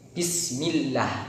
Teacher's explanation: Nah, kemudian di situ bertemu dengan lam jalalah, itu nanti maka lam jalalahnya dibaca tarkik atau tipis dikarenakan huruf sebelumnya yaitu huruf berharokat kasroh